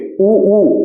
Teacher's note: आप ऊ बोलेंगे, ऊ आपके होठ गोल हो जा रहे होंगे, तो ये ऊ जो है वो ओष्ठ्य है